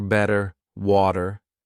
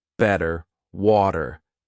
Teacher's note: in American English a t that's between two vowel sounds it doesn't always have to be a vowel but between two vowel sounds is going to change to a d